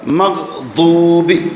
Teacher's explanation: یہ زبان کی جو کروٹ ہے اس کو داڑوں کے جڑوں میں لے جانا ہے، لیکن منہ تبدیل نہ کریں، منہ گول مگول نہ کریں، منہ اپنی جگہ پر برقرار ہو. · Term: ضاد